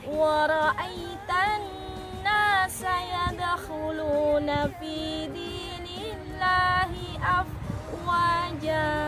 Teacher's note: Wa ra'aitan nasa, maka bacaannya harus ditekan. Kemudian nun tasydid juga bacaannya gunnah, dibaca dengung yang lama